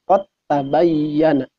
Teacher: Jadi dibacana ulah qad tabayyana tapi lebetkeun dalna dileburkeun kana ta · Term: idgham mutajanisen